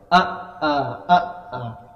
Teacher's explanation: bukan di ujung tenggorokan tapi di pangkal tenggorokan